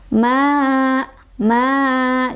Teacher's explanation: Sebabnya karena ada alif didahului oleh huruf yang berbaris fathah, yaitu mimnya ya, fathah. Makanya cara bacanya adalah dipanjangkan sebanyak 2 harokat. Ma, ma, gitu ya. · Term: mad tobi'i